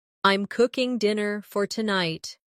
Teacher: The stress is on cooking and tonight.